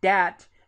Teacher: They're more likely to say dat with a D instead of with a TH